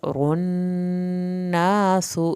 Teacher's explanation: नून की शत पे अलिफ के बराबर देर लगाएं, सीन की पेश को लंबा नहीं खींचना